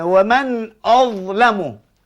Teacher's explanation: huruf za ni kita dapati satu juzuk daripada lidah melekap terangkat ke langit keras di atas